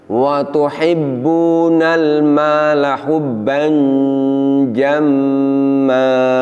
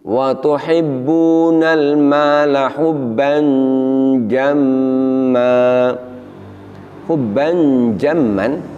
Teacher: Kita bisa merasakan di situ bahwa bunyi tanwinnya atau bunyi nun sukunnya itu samar, tetapi masih terasa ada bunyi nunnya